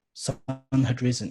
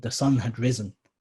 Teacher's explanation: It's not ignored. The had is read unstressed.